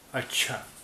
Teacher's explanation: یہ چا کی آواز دو بار آ رہی ہے. ایک بار آدھا چا پھر دوبارہ پورا چا، اس لیے یہاں چے پر تشدید ہے.